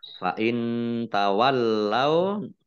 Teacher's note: nun sukun bertemu dengan huruf ta, bacaan ikhfa, dibaca samar-samar. Lamnya dibaca double, ada tasdidnya.